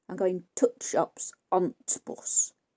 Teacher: Make of that what you will. I mean, people who are sort of middle-aged, elderly now tend to make a very sharp, definite t sound.